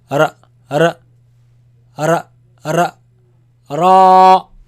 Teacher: Make it long. And this sound actually, it comes from the tip of the tongue touching the front palate roof